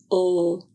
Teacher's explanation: air is blocked by the tip of the tongue against the teeth or ridge. Air usually passes out of the mouth over both sides of the tongue. Do not add vowel sounds before or after the sound of the letter L.